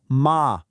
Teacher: This one's called inping. I want you to think of it like a single musical note that you just hold high and steady. It doesn't go up, it doesn't go down, just straight and level like our example ma for mother. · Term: first tone